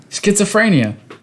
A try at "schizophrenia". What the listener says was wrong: There's not an A in there.